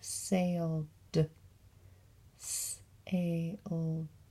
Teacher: I don't hear the eh in that one. It just says d.